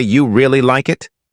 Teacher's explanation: But if you say, you really like it, with rising intonation, it becomes a question full of curiosity